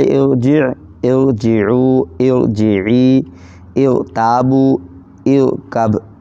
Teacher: تو ہم نے سب سے پہلے ارجع، ارجعوا، ارجعی، ارتابوا، ارکب، یہ 5 الفاظ لائے ہیں۔ ان میں زیر عارضی ہے، زیر ہے را سے پہلے، لیکن یہ زیر اصلی نہیں ہے، عارضی ہے، اس وجہ سے اس را کو پر پڑھیں گے